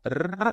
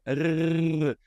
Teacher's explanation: na boca e gargarejar você vai ter esse som aqui ó tão vendo que eu consigo vibrar na garganta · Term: som de gargarejo